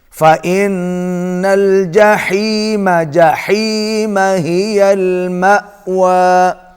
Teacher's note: حا کو حلق سے ادا کریں گے